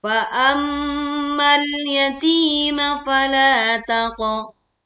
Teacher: Tekan huruf lam sukun dengan tidak memantulkan suaranya.